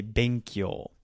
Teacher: Be is lower. Kyo is higher.